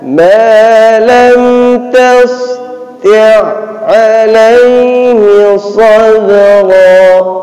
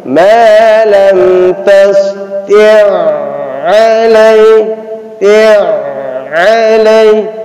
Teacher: Jadi ain yang kedua, ain yang pertama itu tidak masuk. Langsung diidghamkan, masukkan ke ain yang kedua. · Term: idgham mutamatsilan